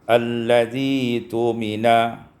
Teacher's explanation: Kemudian alladzi tumina waslan, ketika wasal ibdalul hamzati ya, ditukar hamzah dengan ya